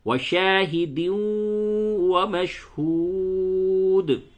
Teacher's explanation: اس تنوین کو آپ نے واو سے بدل دیا، تو اب 2 واو ہو گیا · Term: ادغام مع الغنہ